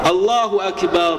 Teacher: Karena sebelumnya kasrah takbir maka ro getarannya akan lebih panjang. Tapi kalau kita mengucapkan Allahu Akbarnya, rnya jadi tebal. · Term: ro tebal